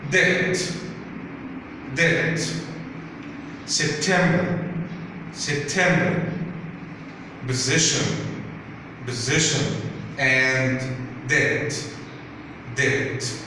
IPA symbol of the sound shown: e